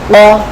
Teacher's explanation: জবর দিয়ে অ সাউন্ড হবে, এটা মোটা অক্ষর। তাহলে আমরা বলি ক, কফ ফাতাহা বা কফ জবর ক, কেমন?